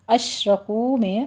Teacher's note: اشرکو میں شین پر تفشی کریں گے ، را مفخم پڑھی جائے گی، کو میں واو مدہ ہے،